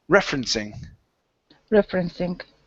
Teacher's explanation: This word is pronounced referencing with the stress at the very beginning.